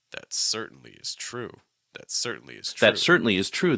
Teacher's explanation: the thought group actually starts on that but the next word after that actually goes up a little bit in pitch